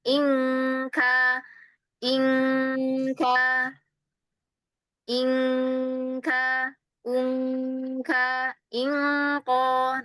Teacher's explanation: Makanya itu salah satu dari dua ikhfa yang mana dia itu gunnahnya ya itu masuk ke hidung itu jelas sekali